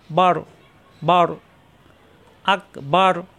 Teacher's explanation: এখানে রয় সাকিন হয়ে যাবে। রয় সাকিন হলে মোটা হয়ে যাবে।